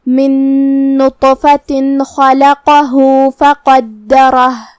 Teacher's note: آخر میں حرف الہا پہ رکیں گے تو اس پہ جزم سے رکیں گے، لہذا ہم ہا کو ظاہر کریں گے